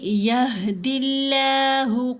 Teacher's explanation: ابھی دال کے نیچے زیر آئی، اس کی وجہ سے ہم لام کو باریک پڑھیں گے، لیکن لام کے اوپر کھڑا زبر ہے، 2 حرکات کی مقدار لام کو لمبا کریں گے. تو آواز بنے گی یہدی اللہ قوما کفروا.